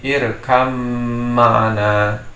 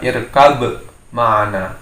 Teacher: Jadi suara ba dimasukkan menjadi kepada mim. Jadi seolah-olah ba ini tidak ada, dihilangkan. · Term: idgham mutajanisain